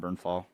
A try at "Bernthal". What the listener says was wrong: Did you say Bernfall? Sounded like you had an F in there, and I was like,